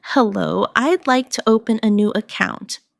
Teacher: Please notice the stress on open an account so the purpose is clear.